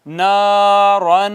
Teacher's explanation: اخفا کو ناظرین کرام کتنا کھینچتے ہیں ہم؟ قصر کرتے ہیں، اس پہ قصر کرتے ہیں، ایک الف جتنا اس کو چھپاتے ہیں